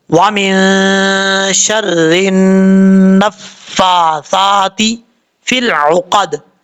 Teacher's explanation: نون کے اوپر شد ہے، ایک الف کی مقدار غنہ کر کے پڑھا جائے گا، نون مشدد کا غنہ ہوگا۔